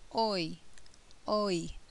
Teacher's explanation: in this sound the mouth begins open for o and moves to closed for I oi oi so the jaw moves up throughout this dip thong